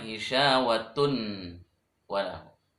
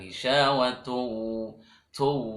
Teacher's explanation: Asalnya tun menjadi tu karena waw. Tu walahum dengung.